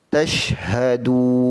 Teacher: Yang betulnya tashhadun, bukan tashkhadun. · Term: huruf ha